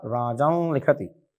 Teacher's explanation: न के अनुनासिक होने के कारण जो परसवर्ण के रूप में ल आया वो भी अनुनासिक आएगा।